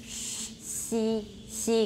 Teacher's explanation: there you're smiling and your tongue goes way up there c c gets really close to the palate · there's considerable raising of the front of the tongue and they are made in the post alveolar region